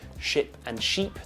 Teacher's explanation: if a Spanish person tries to say ship and sheep they sound the same